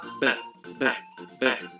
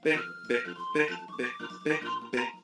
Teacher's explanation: Que en las sordas simplemente se está dejando el aire pasar sin hacer mucho, mientras que en las sonoras se hacen vibrar las cuerdas vocales. Cuando pronuncias la B, puedes sentir tu garganta vibrando. Con la P, esto no ocurre.